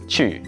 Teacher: if you read linguistics, you know that this sound is a close front rounded vowel